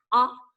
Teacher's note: short O says ah, ah. Look how wide and open my mouth is. Ah, and my tongue is flat